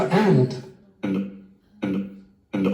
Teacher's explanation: Very often the weak form of and loses its final d too.